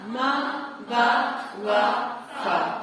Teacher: ہونٹوں سے ہوں چار ادا